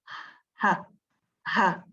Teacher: Now, if you try to say ha, you would notice that the only organ that is in function here is the glottis